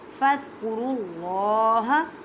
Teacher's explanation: اللہ کے لفظ کو پر پڑھیں کیونکہ اللہ کے لفظ سے پہلے زبر ہے